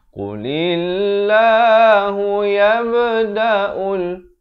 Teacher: Qalqalah sughra ada pantulan.